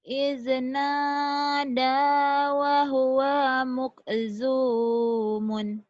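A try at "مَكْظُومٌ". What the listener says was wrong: Wa huwa mak, bukan muk.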